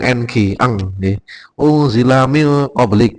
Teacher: Kalau yang di atas tadi berarti yunfiqun unzila min qablik, ini bacaan ikhfa non mati bertemu fa bertemu za bertemu qaf niki ikhfa, yang semula non mati n menjadi berdengung ng